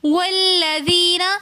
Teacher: والذین میں ہم نے واو کو لام کے ساتھ ملا کر پڑھا. درمیان میں الف ہم نے نہیں پڑھا کیونکہ یہ حمزۃ الوصل ہے جو درمیانے کلام میں آنے کی وجہ سے گر جاتا ہے.